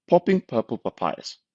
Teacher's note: This helps us check out how the microphone handles the burst of air produced by the P sounds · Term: plosive